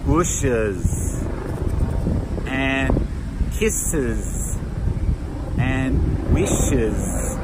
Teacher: when we make the ES ending on those, we have to pronounce the vowel and then that final sound is a Z